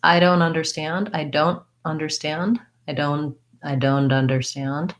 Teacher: I tend to typically use that stop T on don't.